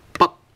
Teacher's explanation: But, it's like the English word but. But then we do not pronounce the ending sound of t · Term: glottal stop consonant